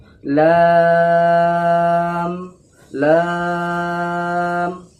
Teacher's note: লামকে বারিকভাবে আর তিন আলিফ টান দিয়ে অর্থাৎ তিন সেকেন্ড ধরে বলবেন